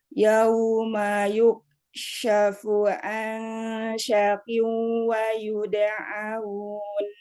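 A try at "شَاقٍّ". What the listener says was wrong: Kok jadi shinnya sa? Syakin. Ah, ini syak itu juga sa, ya harusnya sa dan panjang.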